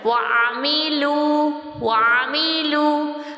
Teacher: اور آئین بیچ حلق سے ادا ہوتا ہے، وا میم کے نیچے زیر ہے تو نچلے ہونٹ کو پھیلا کر وعملوا وعملوا.